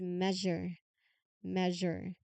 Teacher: In measure, the letter S is making this particular ZH sound not a typical sound.